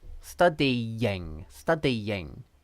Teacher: they're connected by a y sound okay but that y sound is really just the end of the e vowel because it's study so that e vowel so here she's written